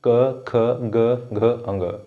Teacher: जो हमारा क वर्ग है वो हमारा कंठ से उच्चारित होता है